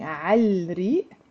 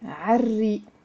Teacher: we don't pronounce this l because re is one of the sun letters as well